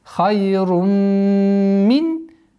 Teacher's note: Здесь у нас идгам, полноценный идгам с полноценной ассимиляцией, с полноценной назализацией. Идгам бигунна камиля.